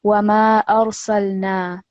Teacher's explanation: no jerking or vibrating on the lam sakin or the ra sakin over here